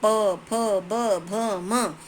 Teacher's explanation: तो हमारे दोनों होंठ मिल रहे होते हैं, तो ये हमारे स्पर्श व्यंजन। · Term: प वर्ग